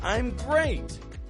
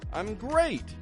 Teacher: Notice how I peak up my tone on great. I'm great. And then again on you.